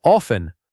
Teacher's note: most native speakers do not pronounce that T at all. The correct sound is often.